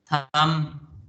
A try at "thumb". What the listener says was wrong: It will not be thumb. B should not be there.